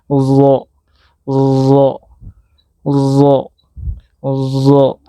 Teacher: Cara menyebut huruf Do. Pangkal lidah kita terangkat hampir menyentuh ke langit-langit.